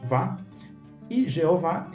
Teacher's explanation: em português fica claro que a última sílaba é a mais forte